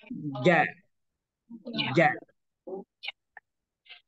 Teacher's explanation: kalau ja dia tempelkan tengah-tengah lidah kita ke langit-langit